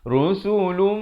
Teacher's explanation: Asalnya di sini bunyi lun, tapi bila datang mim jadi lum, dengung 2 harakat. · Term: idgham bi gunnah